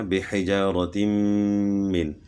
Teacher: 2 زیر کی تنوین کے بعد حروف یرملون میں سے میم ہے تو ادغام مع الغنہ ہوگا